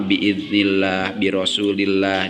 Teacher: ketika ada lafaz Allah setelah kasroh semuanya sama, biidznillah, birosulillah, dibacanya dengan tarkik atau tipis